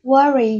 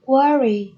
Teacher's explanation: nhấn âm tiết số 1